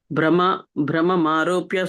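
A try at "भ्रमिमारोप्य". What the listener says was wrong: ఇక్కడ భ్రమం కాదండి, భ్రమం కాదు, భ్రమిం ఆరోప్య. భ్రమి అంటే చక్రంలాగా తిరుగుతుండే. భ్రమం అంటే ఏమిటి? తిరగడం అనమాట. భ్రమి అంటే తిరిగేది.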